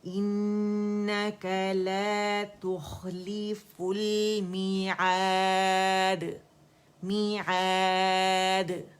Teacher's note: اور دال باریک ہے, باریک قلقلہ ہوگا خوبصورت سا. ہر لیٹر کے مخرج پہ جائیں گے تو وہاں سے پراپر صفات کے ساتھ, اور ساکن پہ صفات زیادہ واضح ہوتی ہیں, تو انشاءاللہ پراپر واضح ہوگا. · اس میں ہم نے قلقلہ نہیں کرنا, یعنی اس مخرج کو جلدی چھوڑنا نہیں, فل نہیں کریں گے. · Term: لام توسط